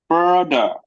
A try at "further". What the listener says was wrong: Further. TH, your tongue should be in between your teeth. Further. further.